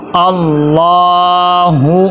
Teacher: اللہ لفظ اللہ کے پیچھے زبر آ جائے تو اس کو موٹا کر کے پر کر کے پڑھتے ہیں اللہ، اور لام کے اوپر کھڑا زبر ہے، اس کو ایک الف کے برابر لمبا کریں گے اللہ۔ ہاں کے اوپر پیش ہے حرکات غیر مدہ میں سے، اس کو لمبا نہیں کرنا اللہ لا۔